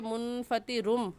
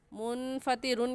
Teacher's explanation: با کے آنے کی وجہ سے چھوٹا سا میم لے آئیں گے اور اس تنوین کو اس میم کے ساتھ ملا کر پڑھیں گے. منفطرن، را دو پیش رن، منفطرن کہنا غلط ہے کیونکہ اقلاب ہو رہا ہے.